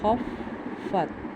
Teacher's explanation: فا حروف قلقلہ میں نہیں تھا اس لیے ہم نے اس پہ قلقلہ نہیں کیا